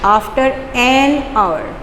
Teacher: silent H है, sound आ रही है ओ की